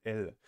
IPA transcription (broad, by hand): l